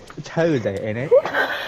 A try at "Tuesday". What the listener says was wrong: No, you. Why'd you pronounce the T? Tuesday! Tuesday. Chew. Tuesday. Tuesday. Tuesday.